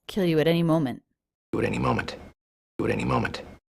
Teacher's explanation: light flap sound connecting at any